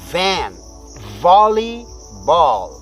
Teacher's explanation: वी को pronounce करते समय हम अपने मुख के अंदर से थोड़ा वायु का स्पंदन देते हैं, यानी एयर को बाहर की तरफ जब थ्रस्ट करते हैं टीथ के थ्रू, फ्रंट टीथ के थ्रू, तो वी इस प्रकार की साउंड निकलती है।